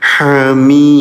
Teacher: Ketika dalnya disukunkan terjadi hukum tajwid namanya qalqalah. Cara bacanya pantulkan.